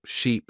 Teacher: Try to notice the long sound in sheep and the short sound in ship.